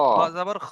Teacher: যেমন এখানে খ আচ্ছা, জাবার খা হবে না, এটা খ জাবার খ হবে, খ, খ জাবার খ হবে, পুর করে পড়তে হবে, মুখ গোল খ, করতে হবে। খা বলা যাবে না এখানে।